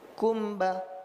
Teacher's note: Ini ziyadatul gunnah. Bertambahnya gunnah itu bukan izhar. Jadi ketika kita mengucapkan kumbala, itu sudah terjadi ikhfa, bukan idgham, bukan izhar, tapi antara keduanya.